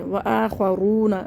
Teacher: خو کو موٹا پڑھنا ہے، رو کو بھی موٹا پڑھنا ہے کیونکہ موٹے حرفوں میں سے ہیں، رو کے اوپر پیش ہو گئے تو ہم رو کو موٹا پڑھیں گے۔